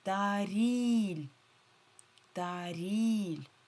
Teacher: другий склад. Тобто вимовляємо і сильніше. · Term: наголос